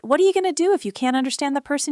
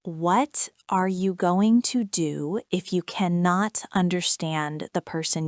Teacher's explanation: The first version sounded like one long word with no spaces in it.